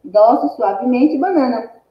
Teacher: As penúltimas sílabas são as mais fortes, então são palavras paroxítonas.